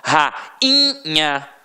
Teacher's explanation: rainha, o I foi o quê? Nasalizado. Então não teve som de I de verdade. Então por isso o I e o U seguido de NH, eles não vão levar acento, porque eles não vão entrar na regra do hiato.